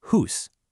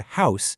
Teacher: that ooh sound also moved up and broke into the sound we know in house today